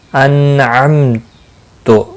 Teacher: نون ساکن کے بعد حرف حلقی کا آئینہ ہے، اظہار حلقی ہوگا، غنہ نہیں ہوگا، اور میم ساکن کے بعد تا آیا ہے، اظہار شفوی ہوگا۔